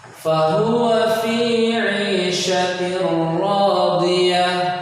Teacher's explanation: Dia tanwin bertemu dengan huruf ra, maka jadilah tasydid, namun tetap bacanya hanya satu saja.